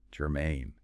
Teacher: Stress on that second syllable.